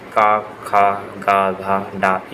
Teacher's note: क वर्ग क ख ग घ ड ये कंठ का स्पर्श करते हैं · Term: स्पर्श व्यंजन